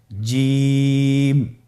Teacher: এর মাখরাজ হলো জিহ্বার মধ্যখান তার বরাবর উপরের তালুর সঙ্গে লাগিয়ে উচ্চারিত হয় আপনারা পিকচারে ছবিতে দেখতে পাচ্ছেন যে জিহ্বার মধ্যখান তার বরাবর উপরে তালের সঙ্গে লাগিয়ে উচ্চারণ করতে হয়।